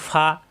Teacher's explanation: ফা এর মাখরাজ কিন্তু উপরের দাঁতের আগা নিচের ঠোঁটের পেট